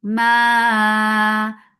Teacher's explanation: mad munfasil jais, make it 4 or 5 counts long